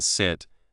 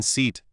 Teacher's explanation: The teacher explained that in sit, the vowel sound is short and relaxed, like a quick breath. In seat, the vowel sound is long and stretched, like a slow smile.